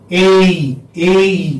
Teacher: Your tongue is gliding, you know, like from one position to another. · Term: diphthong